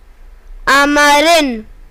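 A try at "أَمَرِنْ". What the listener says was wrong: Not ma. I told you that if the sign is there, means there is nothing, only this sound will come. Amrin.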